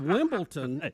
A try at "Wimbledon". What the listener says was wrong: Wimbledon? Yeah, it's not. There's no T in it. Wimbledon.